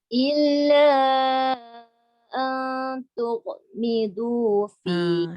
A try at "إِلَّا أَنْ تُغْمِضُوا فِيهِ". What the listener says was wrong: Kan dia ghain dah betul makhraj dia, sifat dia tu dia telantun. Dia bunyi tugh.